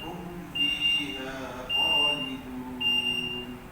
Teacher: Mim tak ada dengung. Hum fi terus.